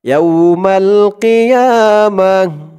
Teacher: চিহ্নতে থামার কারণে লাস্টে যে গুলতা আছে এই গুলতাটা হা হয়ে যাবে মিমের উপরে জবর দিয়ে হাকে ধরলে যেমন উচ্চারণ হয় এখানে তেমন উচ্চারণ হবে।